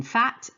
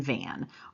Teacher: labial dentals you're using the lips and the teeth